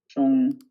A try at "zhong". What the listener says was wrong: Yeah, I feel like you've lost the sh now. So remember, it's sh. This is sh.